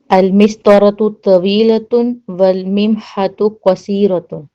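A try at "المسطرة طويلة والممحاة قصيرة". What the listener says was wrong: والممحا ہے، وہاں ہا کے بعد الف ہے، والممحۃ نہیں ہوتا، والممحات ہوتا ہے۔ چلیں اور کوئی پڑھیں۔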